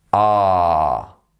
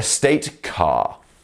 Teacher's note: We're not moving our tongue like r, like they need to in American English. With British English, we just let the tongue sit at the bottom of the mouth, ah. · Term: R sound